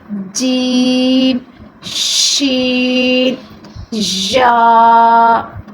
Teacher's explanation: زبان کے درمیان ہے، آپ اٹھا کے اوپر تالو سے لگائیں، تالو کے درمیان والے سے جیم، شین، یا